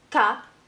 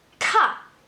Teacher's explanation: this is ca and this is ca aspirated. A little stronger.